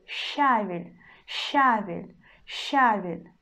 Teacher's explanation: we still pronounce consonant sh in a soft way, and then we just pronounce а. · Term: always soft